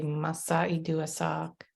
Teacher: in some instances instead of a W for wa you'll hear an m